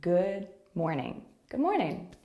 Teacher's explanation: See how we don't release the D sound fully? We don't really say good morning.